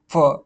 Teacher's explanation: दंत ओट दंत में दांत और होठ दोनों का प्रयोग होता है वो फ दांत में आपके होठ लग रहे हैं ना तो